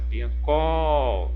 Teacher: Se a sílaba tônica é a última, exemplo, a palavra piancó, ó, é a última sílaba que eu pronuncio com mais intensidade, ó, mais força, piancó.